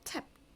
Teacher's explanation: 여기는 tap 소리니까 무성음이고요. 그래서 무성음일 때는 우리가 ed를 t로 발음하기로 했습니다.